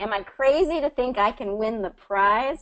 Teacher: it's a yes or no question so we're going up right it's going up at the end